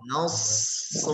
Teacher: Kemudian nasrullah sad, ya, kembali kepada sifat huruf sad, dibaca dengan suara tebal, nafas mengalir, suara memanjang. Nasru harus dengan suara yang memanjang.